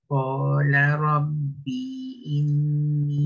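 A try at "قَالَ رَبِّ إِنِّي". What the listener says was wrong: Lebih pendek. Qala rabbi inni.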